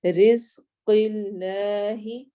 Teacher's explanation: قاف موٹا ہوگا لیکن آگے لام اللہ والا لام موٹا نہیں ہوگا